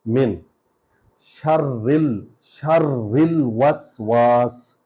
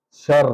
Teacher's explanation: الہ الناس، من، دیکھیں یہ وہی کل والا قاعدہ ہے، یہاں لگ رہا ہے میم کے نیچے زیر ہے، نون پر جزم ہے، من شر الوسواس، یہ را پر زور آ رہا ہے کیونکہ را پر شد ہے اور شد والا حرف 2 بار پڑھا جا رہا ہے، پچھلے شین کے ساتھ اور ایک را کے ساتھ اپنے اعراب کے ساتھ.